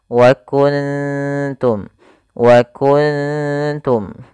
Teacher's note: Ikhfa ini kita namakan ikhfa hakiki, bukan ikhfa syafawi, yaitu terjadi apabila ada nun sukun bertemu dengan salah satu huruf ikhfa, yaitu di sini huruf ta. Maka cara membacanya yaitu suara nunnya disamarkan kepada huruf ta-nya